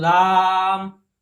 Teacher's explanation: आ का जो स्वर है, आ का जो साउंड है, ध्वनि है, उसको हम काफी लंबा खींचते हैं, तो इसलिए वहां पे भी प्लुत का, वहां पर भी हम प्लुत का इस्तेमाल कर लेंगे, जैसे इस तरह से, ठीक है। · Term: प्लुत स्वर